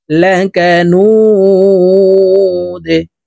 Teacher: নু এখানে 3 আলিফ টেনে দালকে সাকিন করতে হবে, কারণ মধ্যে আরজি মদের হরফের বামের হরফে ওয়াকফ হইলে মধ্যে আরজি 3 আলিফ টেনিয়া পড়িতে হয়।